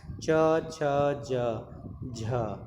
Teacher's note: च वर्ग का उच्चारण स्थान जो है वह तालव्य है